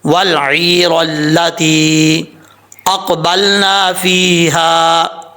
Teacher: عین کو اپنے مخرج سے نکالیں، حمزہ نہ پڑھیں۔